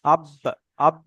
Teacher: বাটাকে মাখরাজের সঙ্গে ধাক্কা লেগে একটু আলাদা হয়ে যাবে